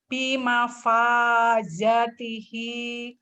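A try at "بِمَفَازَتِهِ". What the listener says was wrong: Bima fazatihi. Zanya pendek ya. Bima fazatihi. Tekan di fa sama hanya ya. Yang panjang.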